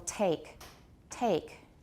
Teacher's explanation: at the beginning of a word a voiceless aspirated stop in English is pretty strong